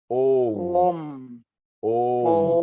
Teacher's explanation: So it is Om, Om, Om. म के लिए आधा म है, तो मुंह बंद करना पड़ेगा.